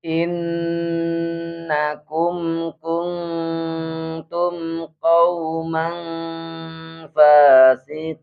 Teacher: kalau ada nun sukun tanwin di sini tuh harus dibaca dengungnya yang lama